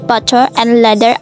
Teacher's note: A quick single tap of the tongue against the alveolar ridge. In American English, the T and D in the words like butter and leather are often pronounced as a flap, making them sound almost identical.